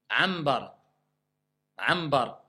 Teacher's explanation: quand vous avez le nun avant le ba, le nun se transforme en mime pour faciliter la lecture du mot. D'accord? Donc ici, il se prononce comme un mime franc avec nasalisation. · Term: al-iqlab